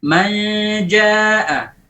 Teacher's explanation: Bagian lisan sudah tidak ada. Tapi bagian khayshum ada. Ada gunnahnya. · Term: ikhfa